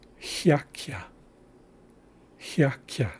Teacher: Then we have the K followed by the A sounding like. So we have a Y sound after both consonants in this word · So we have two palatal consonants in this word.